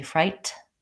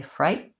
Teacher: I say frighten, and I go right into a syllabic N